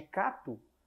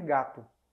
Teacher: O som K, ele sonoriza, fica mais brando, virando G. G, G. Onde as cordas vocais, elas se movem, elas vibram.